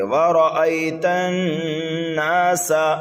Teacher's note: سین متحرک ہے اس لیے جلدی پڑھیں گے، لیکن سیٹی کی طرح آواز نکال کر کے پڑھیں گے۔